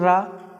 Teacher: रा को बोलते समय क्या है हमारी जीभ कंपन्य करती है कंपन्य करना प्रक पित व्यंजन यानी कि हमारी जीभ कैसी क्या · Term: लुंठित व्यंजन